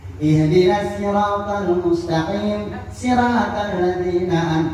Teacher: Tapi syaratnya shadnya dijadikan agak sin.